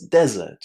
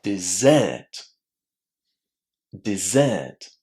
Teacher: Dessert is stressed on the second syllable. Dessert. There is a long air inside that second syllable.